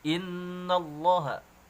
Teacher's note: kita menemukan hukum gunnah musyaddadah, ya. Kemudian di situ ada dengung, ya, ditahan 2 harakat.